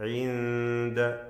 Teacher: ഇൻദ സകിനാനൂൻ ഇഖ്ഫാ ഹഖീഖി നൽകി അവ്യക്തമാക്കി മണിക്കണം